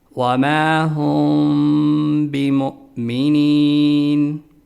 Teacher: میم ساکن منہ بند کر کے ناک سے ادا کرنا ہے اور معمولی سا غنہ بھی کرنا ہے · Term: اخفاء شفوی